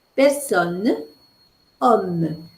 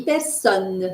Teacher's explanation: avez o n n e ou bien o M m e c'est une voyelle orale et non pas une voyelle nasale